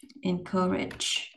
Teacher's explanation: Vậy mình có dấu nhấn rơi vào vần 2. E là en, xuống giọng là en.